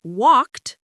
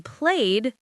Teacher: the ed in walked sounds like a T sound, but the ed in played sounds like a D sound